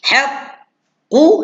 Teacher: Huruf qaf tuan-tuan. Pangkal lidah tolak anak tekak ke dalam. Tolak ke dalam bunyi dia.